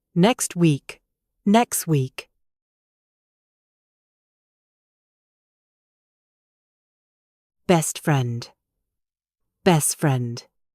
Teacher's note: letters T and D when they are in the middle of other consonants. We find them difficult to say, so we simply delete them.